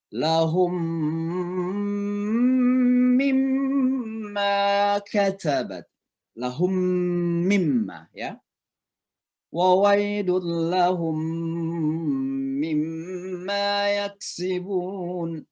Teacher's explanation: Idgham, dimasukkan suara mim itu ke mim selanjutnya, ke huruf selanjutnya. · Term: idgham mimi